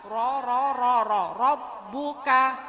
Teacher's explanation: R dibaca tebal tafhim ya Bu ya karena rnya fathah berharakat fathah